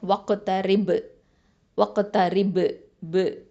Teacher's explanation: அடுத்தது த ஃபத்ஹா த, ரா கெஸ்ரா ரி, ப சுக்குனோட இணைது ரிப். ஓகே, இப்போ வந்து வக்ஃபு பண்ணுறதுனால என்ன பண்ணுவோம், இங்கே கல்கலத்துல் குபுரா கொடுக்கணும்.